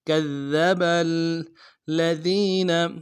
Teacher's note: اگلے دال کو نرم سے باریک ادا کریں گے. با کو آگے لام کے ساتھ ملانا ہے، لام کے اوپر تشدید زور دیں گے